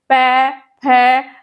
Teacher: तो इसका उच्चारण स्थान भी कौन सा होगा ओष्ठ होगा